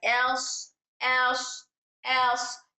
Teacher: लेकिन हर्फ स्वाद में हमारा टंग का बैक साइड ऊपर को उठ जाएगा। और ये हर्फ मोटा पढ़ा जाएगा।